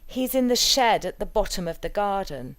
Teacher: shed, bottom and garden will be stressed. If we don't have a context for the statement, we'd probably put the nucleus on garden, as it's the last lexical item in the utterance.